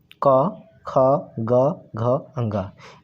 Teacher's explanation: जिन वर्णों का उच्चारण करने पर जीभ का पिछला हिस्सा हमारे कंठ को छूता है उन्हें हम कंठ व्यंजन कहते हैं